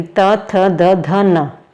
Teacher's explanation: ऊपर वाले दांत में आपकी जीभ टच करेगी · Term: थ वर्ग